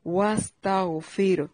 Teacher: واو ہونٹوں کو گول کر کے سین کو باریک سیٹی کے ساتھ پڑھنا ہے. تا کو باریک پڑھنا ہے.